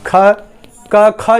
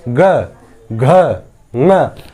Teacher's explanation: क, ख जब बोलेंगे तो गर्जना नहीं उत्पन्न हो रही होगी। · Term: अघोष